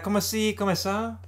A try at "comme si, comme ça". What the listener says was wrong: No, it's not comme. You don't say the E. It's just comme si, comme ça. Comme si, comme ça.